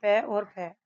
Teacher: प्रत्येक वर्ग का पहला और दूसरा वर्ण जैसे पै और फै अघोष होता है